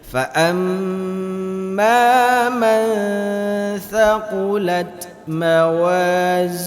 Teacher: Ketika membaca mim bertasydid harus dibaca lebih lama dari bacaan yang lain.